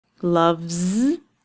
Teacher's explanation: The v sound at the end of the word means that it will be a voiced sound and it will end with a z.